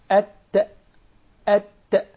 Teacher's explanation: The ta comes from the tip of the tongue with the root of the upper teeth. The tip of the tongue and the roots of the upper teeth.